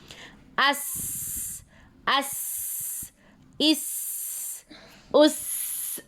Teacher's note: सीन में हम stress देते हैं, सीटी वाली आवाज़ आनी चाहिए, तब जाके सीन की अदायगी होती है।